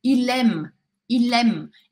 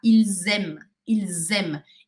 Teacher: Vou falar esse S aqui, da palavra que terminou com S, com um som de Z. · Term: liaison